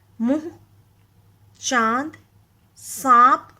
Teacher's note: तो वहां पे आपको गले और नाक दोनों में एक वाइब्रेशन समझ में आती है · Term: चंद्र बिंदु